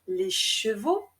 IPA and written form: de ʃevo (les chevaux)